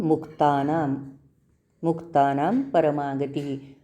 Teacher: पण न च्या पुढच जे अक्षर आहे ते अनुनासिकावर परिणाम करत पुढचा अक्षर आहे प आणि पचा अनुनासिक आहे म प फ ब भ म म्हणून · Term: अनुस्वार